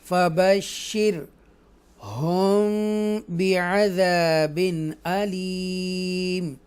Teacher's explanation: را کو ترقیق کے ساتھ پڑھیں گے کیونکہ اس سے پہلے زیر آ رہی ہے